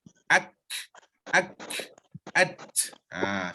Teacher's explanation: sekat dulu baru datangkan angin.